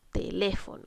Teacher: En este caso estamos cargando la voz en la antepenúltima sílaba. Por lo tanto, vamos a identificar inmediatamente que es una palabra esdrújula.